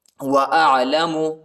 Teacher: عین کو حلق میں پڑھنا ہے، گلے کی درمیانی حصے میں پڑھنا ہے